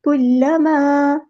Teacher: لام جو ہے وہ تشدید والا ہے تو ایک بار ساکن کر کے ایک بار اس کی حرکت کے مطابق ادا کرنا ہے. الف مد آ گیا تو مد اصلی کریں گے.